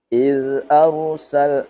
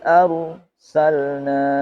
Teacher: Nah, iz tidak sampai iz. Iz arsalna tidak sampai ada suara z. Nah, misalnya ini karena ini bukan qalqalah. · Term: zal sukun